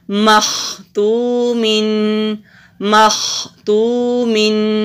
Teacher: خا مستعلیہ حروف میں سے ہے، موٹا بھی کریں گے، اور حروف حلقی بھی ہے تو حلق سے بھی نکالتے ہوئے پڑھیں گے۔ واو سے پہلے پیش، حروف مدہ ایک الف کے برابر لمبا۔